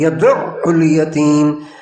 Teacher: عین پر جھٹکا دینا ہے، يَدُعُّ الْيَتِيمَ، جھٹکا، شد کے ساتھ، تشدید کے ساتھ، جھٹکے کے ساتھ